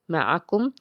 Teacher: میم جو ہے میم زبر ما، عین جو ہے حرف حلقی کا حرف، حلق کے درمیان سے اس کو ادا کرنا ہے۔ مع، کاف جو ہے اس کو نرم پڑھیں گے، باریک پڑھیں گے۔ معکم، میم ساکن ہے، اظہار شفوی ہوگا۔